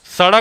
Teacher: स बोल के देखो, स बोलोगे दांत के बीच जाके जीभ टकराएगा, स बोल के देखो, सड़क बोलो, चलो साइकिल बोलो, दांत में टकरा रहा है जीभ, दंतव्य सा